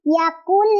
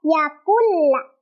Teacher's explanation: langsung ke lamnya tanpa ditahan atau tanpa didengungkan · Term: idgam bila guna